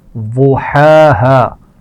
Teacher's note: ضاد کے مخرج کا خیال رکھیے، اس کو موٹا پڑا جائے گا